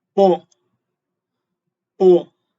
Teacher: the fourth one, which starts out loud but drops sharply to the bottom